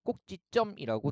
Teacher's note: 순 우리말 그 다음에 점이라는 한자의 결합으로 되어 있고요. 앞말 모음으로 끝나고 지읒이 왔기 때문에 꼭지점이라고 된소리로 발음이 됩니다